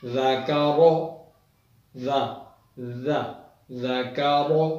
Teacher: ذال کو نرمی کے ساتھ زبان کے سرے کو سامنے والے 2 دانتوں کو کنارے سے لگا کر